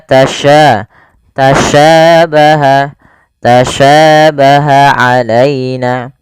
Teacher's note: Sya memiliki sifat namanya tafasyi tafasyi itu intisarusuti fil fam yaitu menyebarnya suara di mulut